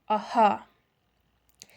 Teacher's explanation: En la siguiente palabra se ve el uso de la fricativa velar sorda, ajá, que representa el sonido del fonema J